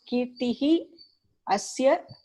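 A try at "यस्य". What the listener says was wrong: Yasya, not asya. Yasya.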